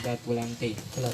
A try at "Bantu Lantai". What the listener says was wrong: Bantu. Bukan batu, tapi bantu. Bantu lantai. Iya, bantu ya. Bukan batu lantai sini.